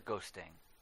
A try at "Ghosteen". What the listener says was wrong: It's Ghost, E-E-N. Not ghosting.